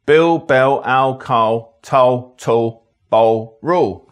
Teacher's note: If you get an L sound without a vowel after it, well, basically you don't get an L sound. This is called L vocalization. That means the L turns into a vowel.